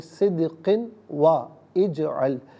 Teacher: دال ساکن ہے لیکن یہاں پر بھی قلقلہ کیا جائے گا، قاف کے نیچے 2 زیر کی تنوین ہے، واو کے ساتھ ملا کر واو کی آواز کو غنّے کے ساتھ ادا کریں گے ، یہاں پر بھی یرملون کا قاعدہ اپلائی ہوگا۔ پھر واو · صدقن میں دال ساکن ہے لیکن یہاں پر بھی قلقلہ کیا جائے گا